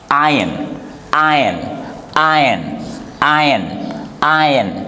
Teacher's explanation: The letter R we do not pronounce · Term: R is silent